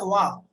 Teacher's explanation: इस वाह को बोलते हैं दंतोष्ठ। एकमात्र ध्वनि जो दंतोष्ठ है वो है वाह।